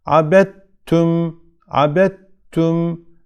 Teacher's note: gördüğünüz gibi dal harfi cezimli gelmiş arkasından t harfi harekeli gelmiş Burada dal harfini şeddeli olarak okuyoruz dal harfinden herhangi bir ses kalmıyor · dal harfi tamamen T harfine katılır tek bir şeddeli t harfi olarak okunur dal harfinden herhangi bir belirti ses kalmaz